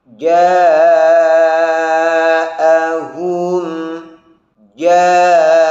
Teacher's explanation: Seperti sebelumnya, perhatikan huruf jim jangan sampai ada hamsnya, dan hamzah serta ha dari ja'ahum harus terbaca jelas. Syiddah dan jaharnya huruf hamzah dan hams dan rokhawahnya huruf ha harus betul-betul dirasakan.